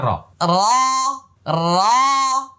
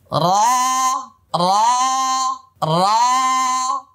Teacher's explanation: ওকে, এবার লক্ষ্য করুন, এটা হলো র, এটা উচ্চারণে মোটা হবে, আর মাখরাজ হলো 10 নম্বর মাখরাজ। দেখেন জিহ্বার আগার পিঠ তার বরাবর উপরে তালুর সঙ্গে লাগে